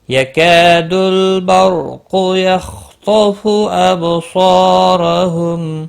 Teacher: قاف مستعلیہ ہے، پر پڑا جائے گا۔ · یکاد کا الف مدہ ہے، ایک الف کے برابر کھینچ کر پڑھیں گے، لام ساکن کو ہلانا نہیں۔